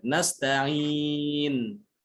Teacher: Jadi kena ke makhraj nun. Berhentinya pada lidahnya tuh nempel pada apa? Pada langit mulut, pada huruf nun, makhraj nun. Nempel dengan jelas, tapi juga tidak boleh berlebihan, ya.